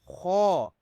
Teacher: خو کو آپ نے بولڈ کرنا ہے، منہ کو گول کر کے آپ نے پڑھنا ہے، یہ بھی حروف حلقی میں آ جاتا ہے۔